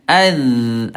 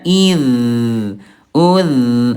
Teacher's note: Suaranya lemah sehingga ketika lagi sukun mengalir dengan deras suaranya. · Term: rakhawah